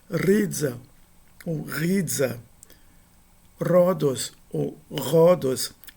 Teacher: Não se trata de uma mera aspiração, não. Se trata de um som de R.